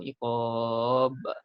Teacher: Ba tu jadilah ma'arif disukun. Kemudian ba yang mati, ba ialah huruf qalqalah, kita pelantunkan di situ.